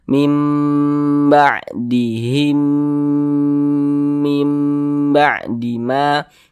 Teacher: maka hukumnya adalah idgham idgham mimi maka kita dengungkan mim ba'dihim di bagian himnya itu kita dengungkan jadi suaranya itu kita tahan kita panjangkan sebentar